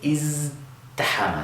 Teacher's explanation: so we have that 'zz,' we're using our voice box